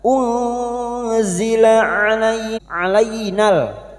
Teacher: [Musik] Anna bertemunya mad dengan hamzah di lain kalimat mad jaiz munfasil kita samakan dengan sebelumnya lima harakat kita panjangkan na unzila alaina nun sukun bertemu zain ikfa hakiki. Kita samarkan bunyi nun sukun dan mendengung selama tiga harakat.